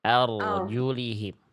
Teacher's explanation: Ro sukun yang sebelumnya fathah. Angkat pangkal lidah tebalkan. Jangan cuman ar tapi arjulihim.